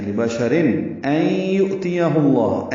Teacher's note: این میں ادغام ناقص ہے، غننے کے ساتھ نون ساکن کی آواز کو یا سے ملاتے ہوئے غنہ پیدا کریں گے. این آواز ناک کے بعد سے مل جائیں گے، دو حرکات غننے میں آواز کو روکتے ہیں خیشوم میں.